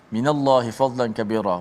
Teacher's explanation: Maka dituliskan di sini peringatan, jelaskan kalimah fadla, huruf dad dibaca dengan tafkhim, tebal, tanpa qalqalah. tidak ada qalqalah pada dad.